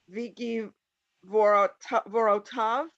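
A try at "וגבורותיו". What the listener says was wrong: Vig, Vigvurotov. You have to hear that ro.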